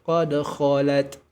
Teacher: Ummatun qad, qalqalahkan huruf dalnya, qad khalat, sini kha sempurna tebal karena diapit oleh dua huruf tipis